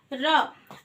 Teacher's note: जब भी हम र बोलते हैं तो हमारी जीभ जो है वो हमारे तालू पर लुढ़क कर र बाहर आता है, यानी कि जीभ को हमारे लुढ़कना पड़ता है र बोलने के लिए, इसलिए हम लुंठित कहते हैं र को।